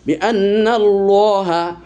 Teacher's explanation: কেননা আল্লাহ শব্দের আগে এই যে জবর এসেছে এজন্য আল্লাহর শব্দটি মোটা হচ্ছে কিন্তু বানানোর সময় বিন্নাল্লাহ কিন্তু উচ্চারণের সময় বিন্নাল্লাহা হা জবর হা